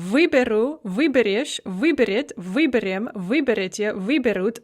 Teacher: the stress remains fixed on the e in the prefix all throughout the paradigm